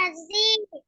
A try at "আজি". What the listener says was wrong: আদি আদি আদি এরকম বলা যাবে না, হামজাতে টান নাই। হ্যাঁ, আদি তাড়াতাড়ি পড়তে হবে। আদি আদি।